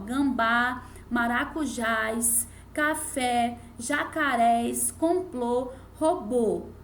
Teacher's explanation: Porque a última sílaba é a sílaba tônica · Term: oxítonas